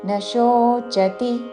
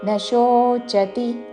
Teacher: న శోచతి తాళవ్య షో దీర్ఘముతో చతి హ్రస్వములు